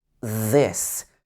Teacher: this is a sound where your tongue is at the front of your mouth and your vocal cords are moving